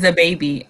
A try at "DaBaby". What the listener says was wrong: Yeah, it doesn't sound like you're saying Da Baby. It sounds like you're saying the baby.